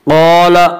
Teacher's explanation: قال الف مدہ، الف ہمیشہ مدہ ہوتا ہے، الف سے پہلے زبر ہوتا ہے. الف مدہ کو 1 الف کے برابر کھینچ کر پڑھیں گے